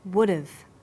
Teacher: When unstressed words begin with the letter H, the H sound is often dropped in connected speech.